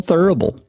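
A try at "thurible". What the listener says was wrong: The U makes an ooh.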